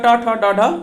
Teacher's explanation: मूर्धन्य का उच्चारण जो होता है वो तालु के ऊपर से होता है